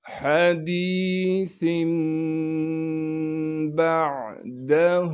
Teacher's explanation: حديث بعده، با کو عین ساکن سے ملا دیں گے اور عین کو صاف کر کے ادا کریں گے۔ دال کو بغیر قلقلے کے اور بغیر کھینچے پڑھنا ہے۔